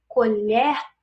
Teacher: quando eu digo colher tem esse som da última sílaba mais aberta